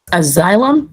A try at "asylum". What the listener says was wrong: No. The word, the A, which we're going to talk about, it's kind of like a schwa sound. So it's not really like a asylum. It's more so like a asylum.